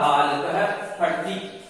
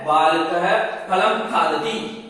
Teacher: प से पूर्व जो अर्ध विसर्ग के समान जो उच्चारण किया जा रहा है उसको उपपदमानीय कहा जाता है